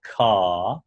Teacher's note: you're dropping the R on car. and just leaving some space there.